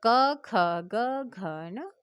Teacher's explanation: कंठ से, गले से आवाज आ रही है